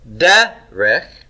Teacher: Notice I've got first syllable stress, derech, and I have the double Sehgal pattern.